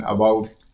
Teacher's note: unstressed and toneless neutral vowel sound is the most common vowel sound in English for example the a in about and